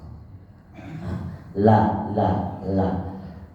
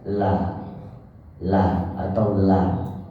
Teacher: tepi jadi anginnya keluar dari samping itu lamah l l l Karena ujung lidahnya naik ke atas gigi seri bagian atas atau langit-langit atas maka suaranya keluar dari samping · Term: huruf lam